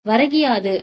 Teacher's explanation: ஒலிக்காம முழு மாத்திரை அளவு ஒலிக்காம என்னன்னா குறுகி ஒலிக்குது வரகியாது அப்படின்னு சொல்லும்போது அந்த கி அப்படின்ற எழுத்துக்கு வந்து என்னன்னா ஒரு மாத்திரை அளவுக்கு ஒலிக்கல அரை மாத்திரை அளவா வந்து குறைந்து ஒலிக்குது